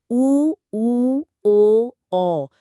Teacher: मध्य स्वर में सिर्फ अ आता है और पश्च स्वर में आ उ ओ औ होठों के आधार पर भी अवृत्त मुखी और वृत्त मुखी होते हैं ना जी उ ओ औ बोलने में होठ गोल हो जाते हैं तो वो वृत्तमुखी हैं